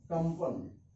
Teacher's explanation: अब प का अंतिम अक्षर क्या है, प फ ब भ म, तो यह यहाँ पर जो अनुस्वर है वह म का उच्चारण होगा